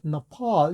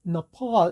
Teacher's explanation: 액센트가 없는 너는 들리지를 않습니다. 너퍼 할 때 그 너 사운드가 바로 슈아 사운드거든요.